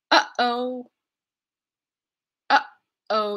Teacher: honor honest and hour where we don't actually say the H instead of the H we're going to lead into it with something close to where the H is made using a glottal stop here in our glottis